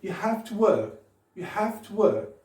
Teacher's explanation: Malheureusement, c'est surtout have qui est accentué. Mais bien sûr, work, qui est un mot-clé dans la phrase.